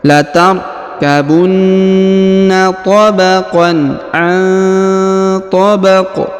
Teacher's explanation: Huruf qaf yang di ujung dipantulkan atau dikolkolahkan